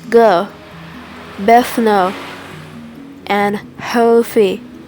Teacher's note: This is known as L vocalization because the L is realized as a vowel type sound.